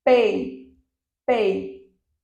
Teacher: quando eu falo pei, observem que o E tem mais força. Se o E tem mais força, ele é a vogal.